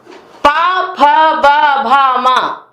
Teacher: प, फ, ब, भ, म जब उच्चारित करते हैं तो दोनों ओठ हमारे जो हैं वो आपस में मिल जाते हैं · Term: ओष्ठ वर्ण